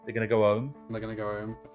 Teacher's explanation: I think that H is the first thing to be dropped